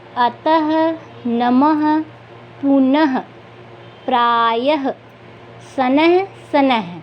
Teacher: ह का उच्चारण आ रहा है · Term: विसर्ग